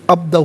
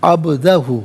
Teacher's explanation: عبدہ، باز ساکن ہے، حرف قلقلہ ہے، آواز لوٹتی ہوئی محسوس ہونی چاہیے، عبدہ نہیں عبدہ۔